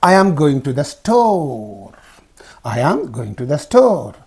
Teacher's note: the pitch falls at the end of the sentence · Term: falling intonation